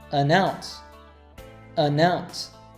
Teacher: Did you hear how connected the article an to the word ounce?